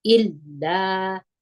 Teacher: ان انتم همزه په زیر د لام سره یو ځای کوو لام باندې زور دی الف مده دی دوه حرکت یې کشوو الا دا تاسې باید خپله واورئ چې لامو دوه واره ادا